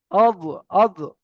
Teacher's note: জীবের কিনারা এবং তার বরাবার উপরের মাড়ির দাঁতের গোড়ার সাথে লাগিয়ে উচ্চারিত হয় দত